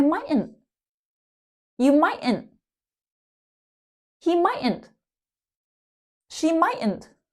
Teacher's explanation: And many times that T in the middle is silent. We just skip over it.